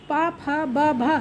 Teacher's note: पा बोलने पर हमारे दोनों ओठ एक दूसरे में चिपक जाते हैं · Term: ओष्ठ